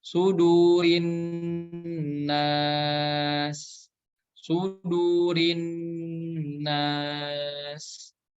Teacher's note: Kemudian di akhirnya ada huruf sin. Huruf sin ini memiliki sifat sofir ya, atau ada desisan ketika membaca huruf sin yang berharokat sukun.